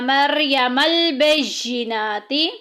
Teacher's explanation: نون کے اوپر کھڑی زبر آ گئی، ایک الف کے برابر لمبا کریں گے